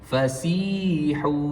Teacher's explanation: Dibaca dengan qadar panjang dua harakat. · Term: mad asli